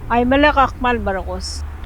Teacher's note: that S at the end actually like flies off the tongue a little bit?